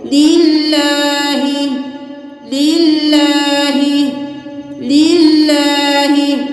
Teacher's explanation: अल्लाह के हर्फ से के नीचे ज़ेर है तो हम इसको बारीक पढ़ेंगे